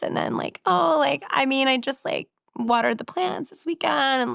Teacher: it's kind of like a frying pan, where she's not using her full voice · the intonation, the end of the sentence goes up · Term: vocal fry